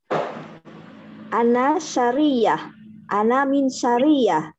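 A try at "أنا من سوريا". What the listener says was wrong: Bukan sa tapi su. Ana Suri. Ana min Suriyah.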